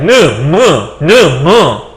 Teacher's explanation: 다음에 이것도 아마 여기가 울릴 거예요. 그래서 니은이나 미음 혹은 이응 같은 음을 코가 울린다고 해서 비음이라고 해요.